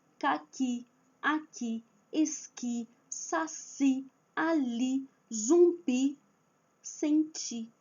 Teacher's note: Com essa sílaba final, esse tipo de sílaba final, então a última sílaba é a forte